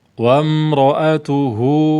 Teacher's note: Sebelumnya ada ta dhamma, setelahnya ada ha fathah. Maka hu ini dibaca panjang dua harokat mad silah mad silah sughra.